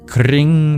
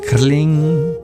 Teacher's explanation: It's a rolled R versus a rolled L.